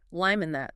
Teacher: The consonant links to the vowel.